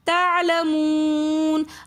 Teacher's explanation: وقف کی حالت میں واو مدہ کے بعد ساکن آ جائے گا، نون ساکن، تو اس لیے ہم اس کو تھوڑا سا زیادہ کھینچ کر پڑھیں گے